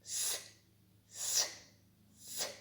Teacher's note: можемо проспівати цей звук с с с Ні не можемо проспівати при вимові цього звука нам заважають і зуби і язичок він промовляється коротко відривчато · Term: приголосний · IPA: [ с ]